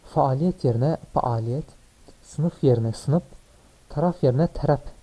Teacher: bütün F sesleri p sesine dönüşmüştür